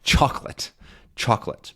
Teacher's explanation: By the way, what's the stressed syllable in chocolate? Good, it's the first one.